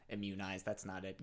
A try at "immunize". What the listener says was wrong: Immunize? I think you just put the syllable in the wrong spot. The emphasis in the wrong spot. You put the syllable in the wrong spot.